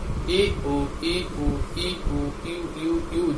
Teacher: ई और ऊ को साथ साथ बोलने पर देखिए आपका स्वर जुड़ने के बाद क्या बना? यू बन गया।